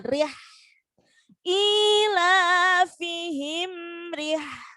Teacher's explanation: Sifatnya hak itu jariyatun nafs. Jadi nafasnya itu mengalir.